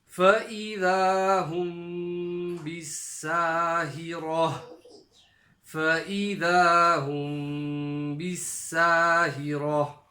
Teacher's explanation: That's called qalb, when you have a ba following a meme sakin, but the sound that you make is ikhfa shafawi. So ikhfa shafawi is a light nasal sound where the lips come together very slightly with a little gap in the middle.